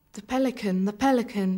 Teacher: none of us could say the without moving the tongue nor Pelican without bringing the lips together